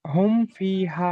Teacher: মিমের উপরে সাকিন আছে, এটা মিম সাকিন, মিম সাকিনের পর বা কিংবা মিম ছাড়া অন্য অক্ষর অর্থাৎ ফা এসছে, তাই মিমকে বিনা গুণায় জাহির করে তাড়াতাড়ি পড়তে হবে, একে ইজহারে সাফাবি বলে।